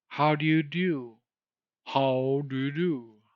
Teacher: in the British accent the u sound very often begins with a Y sound